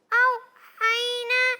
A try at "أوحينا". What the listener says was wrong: نہیں آ رہا, عین آ رہا ہے. او حی حی.